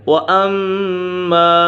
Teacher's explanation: میم مشدد ہے، میم مشدد غنہ ہوتا ہے